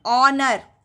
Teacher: H यहाँ पर silent है. H का हम प्रोनाउंस नहीं करते हैं, उच्चारण नहीं कर रहे हैं